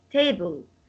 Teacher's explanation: So the stress will be on ta, the first syllable.